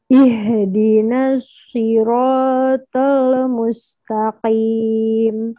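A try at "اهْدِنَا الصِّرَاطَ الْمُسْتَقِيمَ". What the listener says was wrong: Ro-nya kepanjangan, tolnya masih ada kol-kolah loversnya. Hilangin dulu.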